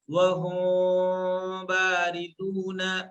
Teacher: چونکہ اس کا نام اخفا ہے تو میم کی آواز کو مکمل طریقے سے ادا نہیں کرنا ہے ، ہلکا، ہلکی میم کو بہت ہلکے سے ادا ہلکا کرنا،